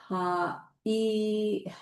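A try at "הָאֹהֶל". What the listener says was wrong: Ohel. It's on top, not on the bottom.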